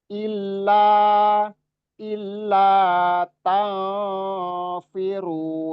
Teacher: ikhfa ausat ya, ausat berimbang antara suara gunnah dengan suara samar. Tafiru ru-nya 2 harokat.